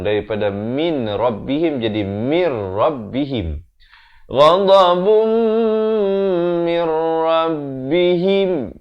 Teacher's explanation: Masuk tanpa dengung. Daripada min rabbihim jadi mir rabbihim. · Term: idgham bila gunnah